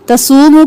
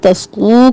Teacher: صوت موٹا پڑھنا ہے سین کی آواز نہ آئے وہ مدہ ایک الف کے برابر کھینچیں تصوموا کریں گے تو